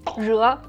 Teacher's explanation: Perfect Chinese r without rounding lips, and the perfect vowel 惹, which actually could be hard for lots of Chinese learners.